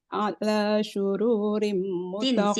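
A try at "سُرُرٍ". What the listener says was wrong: Sin. Jangan syuru.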